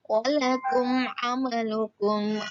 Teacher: mim sukun bertemu dengan huruf ain, maka itu disebut dengan izhar syafawi. Maka huruf mim sukun dibaca dengan jelas.